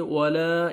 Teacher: یہ الف مد ہے، الف سے پہلے زبر ہے، لام کو آپ نے 1 سیکنڈ کھینچنا ہے